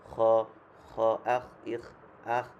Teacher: তারপর হচ্ছে খ, খ নর্মাল, আমরা যেমন ক, খ, আমাদেরটা খ হয়, এটা আরেকটু ভিতর থেকে মানে একটু গলা থেকে বের হবে